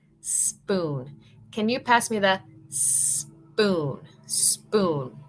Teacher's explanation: Queremos como un sonido bien fuerte de solamente la S, no la E con S, sino S.